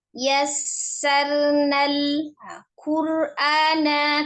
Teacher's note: lam sukun rawan dipantulkan, tidak dipantulkan ya, hanya mengalir sebagian ya